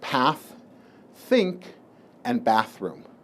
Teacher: th when it's voiceless when it's similar to the Theta in castian Spanish